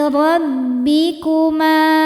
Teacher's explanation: Ma hukumnya mad thabi'i dzahiri, karena ada alif didahului harakat fathah. Cara bacanya dipanjangkan dua harakat.